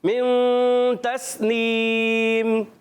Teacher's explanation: एक अलिफ का गुन्ना करेंगे नून को छुपा कर अदा करेंगे